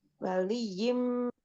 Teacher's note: Kemudian ada idgham bi guna juga untuk tanwin kasroh tanwin bertemu dengan huruf mim. Waliyim idgham bi gunahnya dibaca 3 ketuk dengungnya